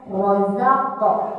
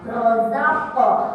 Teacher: qalqalah qafnya bunyikan. Rozaqo, qalqalah itu mantul. Rozaqo, nah di ayun 2 harokat.